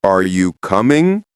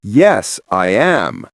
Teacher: are you coming? Rising tone. Yes, I am. Falling tone. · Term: intonation mapping